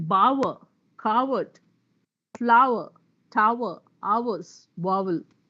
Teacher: You don't have the R. The spelling says R, there's no R there. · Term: vowel cluster